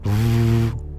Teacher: the v in Sanskrit is not a labio dental we do not bring our lip to our to our teeth